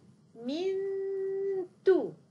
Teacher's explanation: الغنه ستكون موجوده نحن فقط الغينا الجزء اللساني لكن غنه النون موجوده